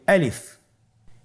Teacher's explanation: গলা এবং মুখের শূন্যস্থান হতে আলিফ হরফটি উচ্চারিত হয়